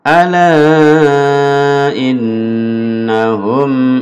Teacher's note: Lalu ini ada guna innahum, dengung 2 harokat